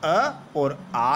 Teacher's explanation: कंठ से उच्चारित होने वाले जो स्वर है वह अ और आ है